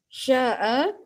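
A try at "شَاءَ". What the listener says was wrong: Okey, kalau boleh ibu panjangkan sikit. Sya'a supaya semua nampak. Tu pendek je. Syah dia panjang.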